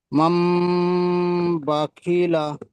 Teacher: নুন সাকিনকে মিম দ্বারা পরিবর্তন করে এক আলিফ পরিমাণে গুণনা করে পড়তে হয়।